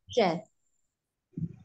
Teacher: Makhraj shinnya keluar dari tengah lidah, shinnya tengah lidah yang bertemu dengan langit-langit tengah ya, tengah lidah yang bertemu dengan langit-langit tengah, jadi tidak atas dengan memunyongkan kedua bibirnya, shinnya tetap syafetin, bukan syafetin, tetap alisan ya.